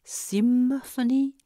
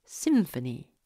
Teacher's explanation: l'occlusion nasalisée au niveau des incisives supérieures et de la lèvre inférieure